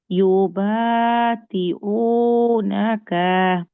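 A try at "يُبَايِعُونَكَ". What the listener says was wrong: তি কোথায় পেলেন আপনি? ওখানে তি আছে? চোখের ভুল, চোখের ভুল।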